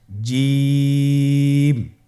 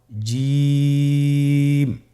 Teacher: এর মাখরাজ হলো জিহ্বার মধ্যখান, তার বরাবর উপরের তালুর সঙ্গে লাগিয়ে উচ্চারিত হয়